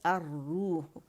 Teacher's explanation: و باریک ہے، والروح ملا رہے اگر ہم الگ پڑھیں گے الروح. را جو ہے مشدد ہے اور را مخفف میں موٹی ہے